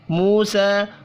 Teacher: واو مدہ اور کھڑی زبر ایک ایک الف کے برابر کھینچ کر پڑھے جائیں گے